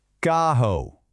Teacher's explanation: So, you're not rolling the R. You're just saying ca followed by a soft, breathy ho. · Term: double R sound